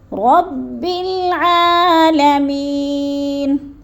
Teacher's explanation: اب رب عین کو حلق کے درمیانی حصے سے ادا کرنا ہے